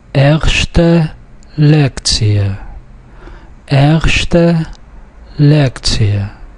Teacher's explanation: The stress is on the next to last syllable throughout.